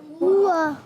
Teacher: हा हलक के नीचे वाले हिस्से से अदा होता है, वाव होंठों की गोलाई से और हरकत को बगैर खींचे बगैर झटका दिए मारूफ पढ़ते हैं।